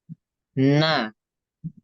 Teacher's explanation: pertama cara keluar nafasnya cara keluar nafasnya itu dia jahar jadi ketika kita mengucapkan huruf nun dia tidak mengalir nafasnya